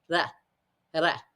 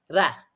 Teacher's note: It's actually almost a very quick D sound at the very front of your mouth. The tongue is gently going to tap the back of the teeth. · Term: flipped R